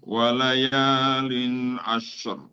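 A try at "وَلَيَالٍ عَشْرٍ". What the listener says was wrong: ini ee srya en-nya masih terlalu kuat. Kalau bisa en-nya tipis-tipis saja.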